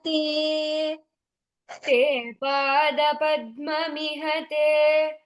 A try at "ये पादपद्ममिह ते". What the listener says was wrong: ये पादपद्ममिह ते. First is ye, then is te.